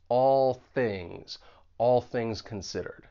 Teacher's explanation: you move right into that voiceless th in things because the tip of your tongue is going to be behind your top front teeth and it's like we can just connect those two words all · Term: co-articulation